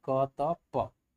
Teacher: अघोष भी होना चाहिए, अल्प प्राण भी होना चाहिए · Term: अघोष अल्प प्राण